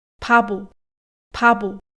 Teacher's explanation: no meio das palavras o som não é aspirado e na verdade chega a ser até vozeado como um B mesmo